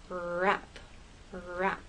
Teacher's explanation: With R and rap, the tip of your tongue goes up towards that bump, but it doesn't touch. The rest of your tongue is sort of bunched up and tight and raised towards the roof of your mouth.